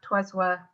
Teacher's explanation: We've got the S pronounced in trois when we wouldn't normally pronounce it. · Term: liaison